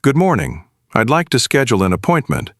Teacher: my tone went down slightly at the end, not up. That downward tone makes it sound confident instead of unsure.